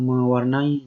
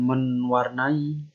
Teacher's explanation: Lalu menasal tambah warnai. N-nya hilang, mewarnai, jadi bukan menwarnai. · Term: penghilangan fonem